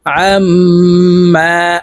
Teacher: আইন মিম জবর আম হরকতের বামে মিমের উপরে তাসদিদ আছে তাই এই আইন মিমের সাথে গুন্না সহিত পড়বো